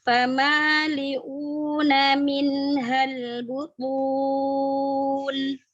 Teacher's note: Tebalkan huruf ta, kemudian dhammah ya, memajukan kedua bibir.